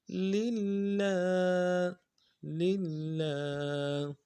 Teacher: کھڑا زبر ہے ایک الف دار میں کھینچیں گے